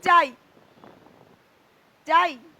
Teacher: আ সামান্য মুহূর্তের মধ্যে ইতে পরিণত হয়ে গেছে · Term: অর্ধস্বর